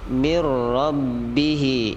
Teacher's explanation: idgham bila gunnah, langsung masuk ke huruf ra